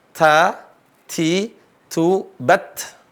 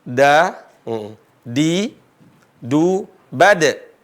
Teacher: Huruf ta hamas, ada hamasnya, ada desisnya. Huruf dal enggak berdesis. Tempat keluarnya sama, sifatnya yang berbeda.